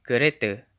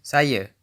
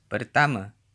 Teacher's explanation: Notice the Malay pronunciation of kereta. kereta, Final a is usually pronounced as a schwa in Malay, at least in Malaysia.